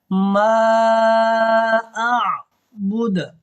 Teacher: وقف کرنا ہے اور دال کو ساکن کرنا ہے، اور یہاں پہ قلقلہ ہوگا